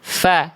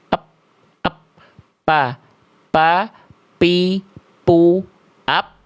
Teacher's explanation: Kalau fa tadi dari mana? Ujung gigi seri atas, nempel ke bibir bawah bagian dalam, fa, sehingga mengalir nafas, fa. Kalau bibir atas dan bibir bawah yang nempel, ya, nggak akan keluar ngalir nafasnya. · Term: makhraj fa